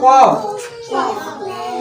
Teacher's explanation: زبان کی جڑ کا آخر جو کوے کے پاس ہے